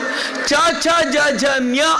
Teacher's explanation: ಗ ಘಂದ ಬರುತ್ತೆ ಚ ಛ ಜ ಝ ಞ ಅಂತ ನೀವು ಹೇಳಿದ್ರೆ ನಾಲಿಗೆ ಹೋಗಿ ಅಂಗಳಕ್ಕೆ ಪ್ಯಾಲೆಟ್ ಗೆ ಬಡಿಯುತ್ತೆ